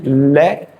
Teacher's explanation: दंत मूल पर चिपक जाने के बाद में ये हमारे मुंह में जो हवा भरी होती है वो पीछे से जीहभा के दोनों तरफ से गालों को स्पर्श करती बाहर निकलती है। पीछे की तरफ से स्पर्श करती बाहर निकलती है। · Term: पार्श्विक व्यंजन